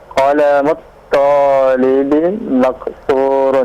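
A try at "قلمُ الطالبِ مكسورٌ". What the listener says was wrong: Naam, sahih.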